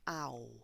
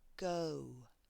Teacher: So I know this ends in a written consonant, but the final sound is actually a vowel sound, and it's an ow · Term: ow sound